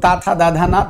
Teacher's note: पूरा तवर्ग दांत से बोला जाएगा, दा दांत से, ता दांत से, ना दांत से। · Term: दंत्य